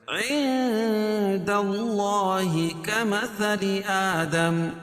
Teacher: عند اللہ کمثل آدم، عند اخفاء حقیقی، کیوں؟ اس لیے کہ نون ساکن کے بعد حروف اخفاء کے 15 حرفوں میں سے دال ہے، پھر ناک میں آواز کو چھپا کر پڑھیں گے